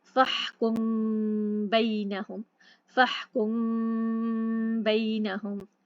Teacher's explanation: हल्का गुन्ना होता है, बहुत प्रॉपर तरीके से गुन्ना नहीं सुनाई देता, हल्का खफीफ गुन्ना होता है। इसमें एक अलिफ के बराबर, यानी कि हरकतान इसको कहते हैं, यानी कि 2 अलिफ के बराबर हम उसको पढ़ेंगे। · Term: इख्फा शफवी